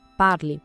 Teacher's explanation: essa terminação e é muda. O som morre no l, parle. A diferença é sutil, mas crucial.